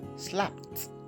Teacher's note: you have ed at the end, then the ed there is pronounced as though it's a t. So the ed takes the sound t.